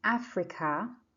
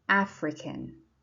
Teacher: in Africa and African the stress is on the first syllable